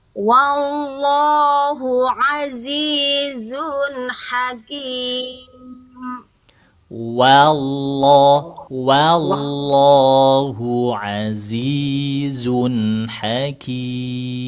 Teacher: ketika mengucapkan lafaz Allah ya, itu yang dinaikkan, yang ditempelkan ujung lidah bagian atas, ditempelkan di pangkal gusi gigi seri atas